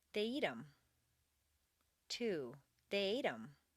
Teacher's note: in fluent speech the th of them is frequently dropped as is the h in other object pronouns him her